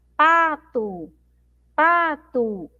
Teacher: Então eu demoro mais um pouquinho falando a sílaba pa, tá? É a sílaba mais forte da palavra pato.